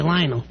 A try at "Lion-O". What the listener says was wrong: You're putting an L on the end of it, you idiot.